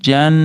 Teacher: nunni ushlab turamiz, g'unna qilib